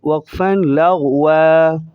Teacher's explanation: وقفاً کے بعد اسٹاپ کی صورت میں کھینچ کر پڑھا جائے گا ایک الف کے بقدر